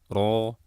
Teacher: ro berharokat fathah dibaca tebal